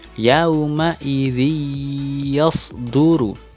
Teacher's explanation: Kasrah tanwin di bawah huruf zal tidak boleh terbaca n lagi, tetapi harus masuk ke dalam huruf ya. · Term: idgham bi gunnah